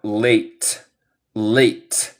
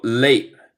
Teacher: En el inglés estadounidense, vamos a una cosa que se llama un glottal stop, donde tengo un pausita sin sonido. Y este pausito sin sonido es el T.